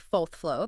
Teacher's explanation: In 1960s New York City, dropping that R, so saying something like 4th floor, that was the casual informal choice. Pronouncing the hard R was considered the socially prestigious, formal, correct choice. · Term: post-vocalic R